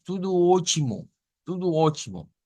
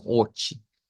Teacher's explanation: hemos dicho que la T se convierte en el portugués a una especie de CH. Entonces, la transliteración nos pone directamente una CH, vea, como ochi.